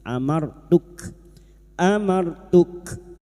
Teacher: ro sukun yang didahului fathah kita baca tafkim